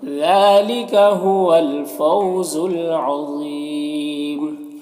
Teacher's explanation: ذا حروف مستعلیہ میں سے پر پڑھیں گے۔ یہاں پر وقف کی صورت میں مد عارض وقفی ہوگا